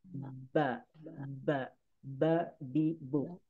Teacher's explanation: Nah, dari dua bibir ini ya. Huruf ba keluarnya dari dua bibir dengan cara dirapatkan kemudian dibuka